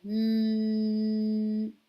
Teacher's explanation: the mean has got honna as a characteristic so we have to stretch the two counts like we're counting in one two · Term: unna sound